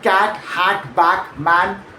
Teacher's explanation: The cat vowel is made with the mouth quite wide open and the tongue low and forward almost like you're starting to smile while you say it.